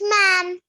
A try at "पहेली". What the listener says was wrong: Is this ma or pa? Pa. प हे ली।